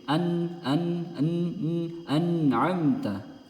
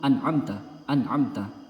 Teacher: huruf nun sukun ini memiliki sifat ghunah jadi digunahkan walaupun sedikit